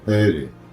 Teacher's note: Грузины произносили это имя с придыханием: «Гери». В то же время следует отметить, что этот термин, этот этноним, в грузинском языке также используется для обозначения армии.